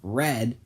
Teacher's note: you put your tongue closer to that alveolar ridge than anything else and voice out.